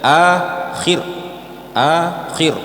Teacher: ketika waqaf di akhir jangan sampai khinya dipanjangkan